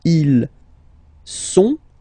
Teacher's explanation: Ils sont, final T not pronounced.